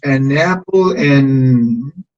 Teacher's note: se cancela el sonido de la D y tenemos solamente N.